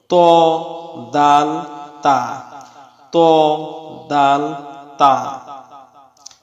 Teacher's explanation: জিহ্বার আগা সামনের উপরের দুই দাঁতের গোড়ার সঙ্গে লাগাইয়া 3টি হরফ উচ্চারিত হয়